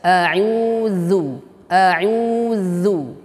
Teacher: Pada huruf zal, nah tadi kita sudah bahas mengenai kaidah harakat dhammah harus monyong, ya. Kemudian pada huruf zal, ujung lidah dengan ujung gigi seri atas.